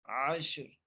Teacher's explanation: وقف کی صورت میں را کو ساکن کریں، اس لیے را کو موٹا کر کے پڑھیں گے